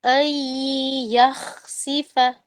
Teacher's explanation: ان یخسفا میں نون ساکن کے بعد آپ کو یا متحرک ملا ہے، یہ بھی ادغام ہے